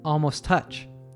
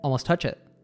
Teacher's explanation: the word almost ends in a t- sound and touch starts with a T simply merged them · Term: connected speech